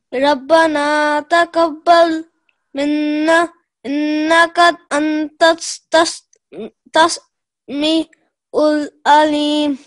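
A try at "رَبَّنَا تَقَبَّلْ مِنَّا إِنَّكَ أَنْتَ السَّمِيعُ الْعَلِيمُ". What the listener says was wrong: Antas Mi Ul Alim. Just join so antassa antassami'ul alim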